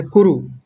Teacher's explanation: दोनों पर ह्रस्व उकार है यानी छोटे उ की मात्रा है। तो जल्दी बोलना है